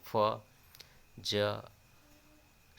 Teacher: वायु घर्षण करके निकलती है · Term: संघर्षी ध्वनियाँ